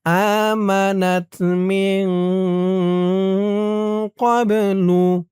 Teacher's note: ইকফা নাকের ভিতরে লুকিয়ে গুন্নাহ করে পড়তে হবে